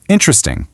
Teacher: It's a total mouthful. But when we squish those middle letters together, it transforms into a really sleek 3-syllable word